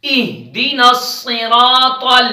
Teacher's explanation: زبر ہے اس وجہ سے را موٹی پڑی جا رہی ہے طا کو موٹا کریں طا بھی موٹے حروف میں سے ہے